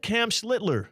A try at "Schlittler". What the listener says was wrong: No, you're doing it wrong. You're completely skipping the CH in Schlittler. You're saying Cam Schlittler.